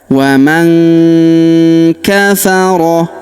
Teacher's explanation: Huruf nun sukun bertemu huruf ka, maka nun sukunnya melebur ke huruf ka, kita baca dengung dan samar. Dengungnya kita tahan 2-3 harokat ya.